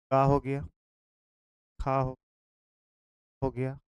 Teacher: का वर्ग का हम लोग कंठ से करते हैं